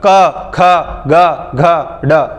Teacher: ये क वर्ग पूरा तो जब भी आप बोलोगे तो कंठ कंठ प जोर पड़ेगा